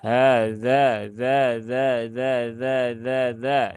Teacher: jadi dia ujung lidah eh menempel ke gigi seri bagian atas ya